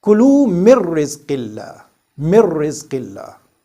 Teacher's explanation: This noon sakin here is followed by the letter ra. So we must do idgham.